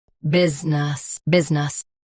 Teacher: Business, both US and UK have the same pronunciation of this word. Stress biz. Keep nus soft and quick.